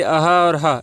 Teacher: ये अह और ह ये जो है आपका कंठ से निकलता है